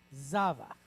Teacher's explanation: the metaga is at the front so we know we're going to stress that syllable